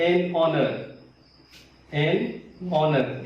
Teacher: H silent है, यहाँ पर इसको नहीं पढ़ा जाता